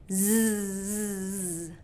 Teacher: getting that tongue behind your teeth, z, and creating that friction and that voice on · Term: z sound